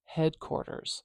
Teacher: that sound is often uh devoiced in real life so if I was doing a narrow transcription this would probably be more like an S at the end